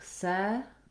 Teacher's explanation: The word second has first syllable stress. It sounds like se.